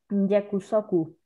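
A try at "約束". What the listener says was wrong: Esa primera sílaba hay que pronunciarla un poco más suave. No es tanto como la Y del español, es un poco más suave. Ya. Yakusoku.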